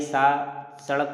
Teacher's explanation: स जो है इसका उच्चारण दंत से होता है। बिल्कुल दंत से होता है।